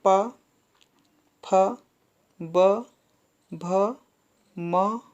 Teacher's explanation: ये ओष्ठ वर्ण कहलाएंगे, इनका उच्चारण स्थान ओठों से है ना।